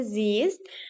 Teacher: bu zaman mən Z-nı uzatmayacam, İ-ni uzaldacam.